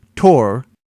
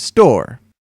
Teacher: To see the difference between an aspirated and unaspirated sound, hold your palm up to your mouth when you say words like tor and store. You should feel a strong puff of air when saying tor and not a puff of air when you say store